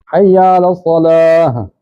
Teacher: तो सीने से आवाज़ आएगी, ता की आवाज़ हा में बदल जाएगी